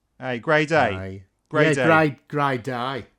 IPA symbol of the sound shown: ɐɪ